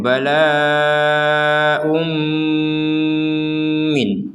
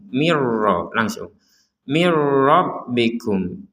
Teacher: Kalau yang pertama ini kita tambahkan dengung, kalau yang kedua kita tidak menambahkan dengung. · Mirrabbikum, enggak ada dengung sama sekali.